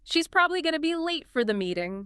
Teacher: the crucial information probably late meeting is carried clearly by those stressed words · Probably late. Meeting. Those seem to be the key ones carrying the stress.